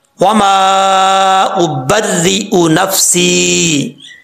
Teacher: پہلی بات تو یہ ہے کہ را کے اوپر شد ہے، اور را کو پڑھتے ہوئے کیونکہ جس حرف کے اوپر شد وہ 2 دفعہ پڑھا جاتا ہے تو یہاں پر آپ نے را کو مشدد پڑھنا ہے۔